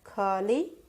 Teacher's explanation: ಖ ಅಕ್ಷರ ಉಚ್ಚಾರಣೆಯಲ್ಲಿ ಹೆಚ್ಚು ಉಸಿರಿನಿಂದ ಉಚ್ಚಾರಣೆ ಮಾಡುತ್ತಾರೆ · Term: ಮಹಾಪ್ರಾಣ ಅಕ್ಷರ